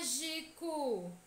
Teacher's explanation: A sílaba tra é a mais intensa. É a que demora mais a ser pronunciada.